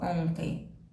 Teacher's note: o som da letra n não sai o som da letra m também não